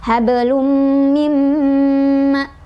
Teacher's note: Ditahan dulu dengungannya ya.